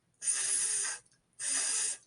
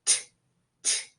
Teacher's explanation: To pronounce the th sound correctly, the tip of your tongue should touch your upper teeth. And unlike the t sound, the th sound can be stretched out.